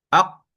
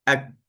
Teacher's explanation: Berarti dia depan sikit daripada qaf. Sebab tu huruf qaf dia ada qalqalah, huruf kaf dia tak ada qalqalah.